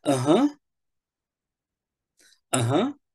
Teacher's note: rising intonation to show that you're interested in what they're saying